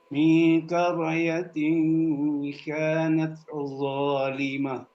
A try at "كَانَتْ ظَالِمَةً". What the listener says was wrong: Dari kanat coba supaya dapat ikhfanya. Tadi ikhfanya kurang jelas.